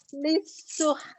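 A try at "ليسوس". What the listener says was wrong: Lisuh. Enggak, ini ha masih kurang.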